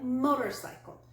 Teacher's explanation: four syllables we stress the first syllable